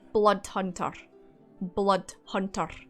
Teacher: roll the R at the end of hunter